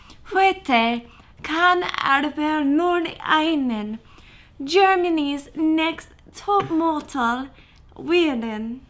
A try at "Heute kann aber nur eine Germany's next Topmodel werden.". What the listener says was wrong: That was really good. I like that.